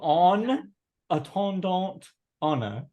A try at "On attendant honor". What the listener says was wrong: No T at the end of